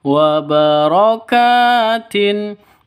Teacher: ka panjang dua ketukan karena ada Alif ini kafnya Itu kan asalnya kafnya seperti ini karena ditambah Alif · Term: Mad asli